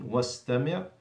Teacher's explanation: So undur, wastami', we don't pronounce the hamzat al-wasl because in the middle of the sentence, so you go straight to the scene, wastami'.